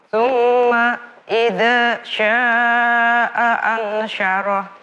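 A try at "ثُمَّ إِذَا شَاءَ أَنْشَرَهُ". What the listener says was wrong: Ya, jangan putus-putus. Coba lihat tanganku. Tsumma idza syaa'a ansyarah. Bukan idzanya yang panjang tapi syanya.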